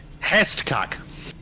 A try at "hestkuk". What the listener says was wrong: You need to put more emphasis on the U. The U goes deeper. Hestkuk. You don't need to say hest. Just hest is singular. you make- Or if you're gonna use the accent from my hometown, it would be the E becomes an A.